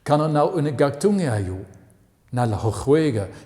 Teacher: You can hear the language as a series of glottal stops. It sounds like a series of jerks.